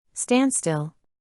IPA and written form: ˈstændˌstɪl (standstill)